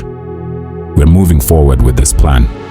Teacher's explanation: Downward inflection. The falling tone signals this is decided, not up for debate.